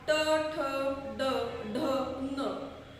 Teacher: आता हे सगळे उच्चार जे आहेत ते जीभ वळवून करायला लागतात. बरोबर आहे की नाही, जीभ वळवली जाते म्हणून याला काय म्हणतात, मूर्धन्या.